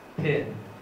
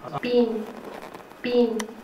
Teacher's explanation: But so if you look at the spectrogram here, my pronunciation is this: pin. So there is a burst and aspiration and the following vowel and the nasal consonant. So aspiration can be seen on the spectrogram.